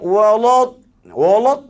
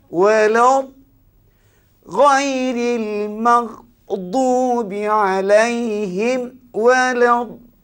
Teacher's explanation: lam tu kena tipis, dad kena tebal.